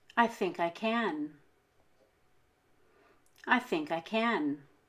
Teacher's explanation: here we stress think and can we stress can because it is at the end of the